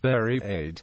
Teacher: H dropping in South Devon and Cornwall